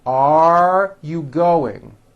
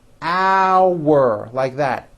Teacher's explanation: The first word are has a strong R sound at the end.